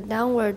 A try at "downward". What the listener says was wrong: Down. I want to hear the N. The first time I heard downward.